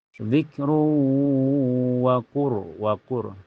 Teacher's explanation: Ini ro dibaca tebal ya, baca tafhim karena sebelumnya berharakat domah. · tanwin Domanya dimasukkan ke wau dan ditahan sampai terasa ke hidung · Zikru setelahnya ada hukum idgham di gunnah karena tanwin domah ketemu waw ya. Cara bacanya tanwin domahnya dimasukkan ke waw dan ditahan sampai terasa ke hidung. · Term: ro sukun mutlak, idgham bigunah